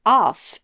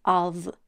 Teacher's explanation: the word of is pronounced with a V sound at the end not with an F it's not off it's a different word it's of in the